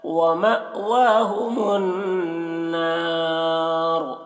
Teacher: حمزہ ساکنہ ہے تو جھٹکا لگا کر پڑھا جائے گا۔ واو میں کھڑا زبر ہے، اسے ایک الف کے برابر کھینچ کر پڑھیں گے۔